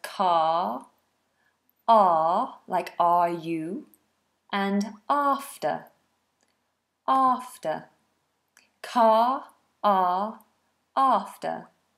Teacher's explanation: remember this one long vowel mouth wide flat tongue a a not forward a but back a